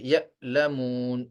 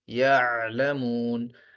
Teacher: حمزہ کی آواز سخت اور جھٹکے والی ہوتی ہے جیسے یعلمون، اور اسی طرح عین کی آواز قدرے نرم اور بغیر جھٹکے والی ہوتی ہے